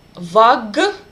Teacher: Z affected this k, and k became a voice sound.